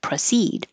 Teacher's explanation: The verb has stress on the second syllable for proceed, and the pro is not stressed, so you can pronounce it with a proceed, or a because it's not stressed and it's going to be more likely to change to and going to be shorter duration, proceed.